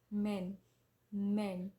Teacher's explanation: M sound is nasal consonant